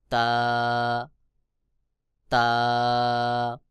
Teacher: ভেজা অংশ থেকে বা উচ্চারণ হবে যেমন বা তারপরে রয়েছে তা জিহ্বার আগা সামনের উপরের দুই দাঁতের গোড়ার সঙ্গে লাগাইয়া তা উচ্চারণ হবে